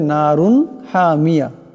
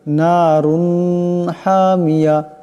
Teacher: এই র উপর দুই পেশের তনবিনকে গুন্না করা যাবে না বেলাগুন্না পড়তে হবে